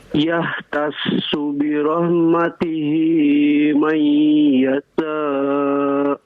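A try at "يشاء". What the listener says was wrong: Ya, shinnya keluarkan, shinnya. Shin ada tafashi ya, berhembus. May yasha.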